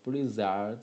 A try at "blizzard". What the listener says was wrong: No, it sounds like zh, which is a ZH sound. Blizzard. Zh. No, blizzard. Zard. The zh sound. I can hear the zh sound. Okay, it should be zard. Blizzard. Blizzard.